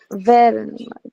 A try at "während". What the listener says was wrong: Mit umlaut wären.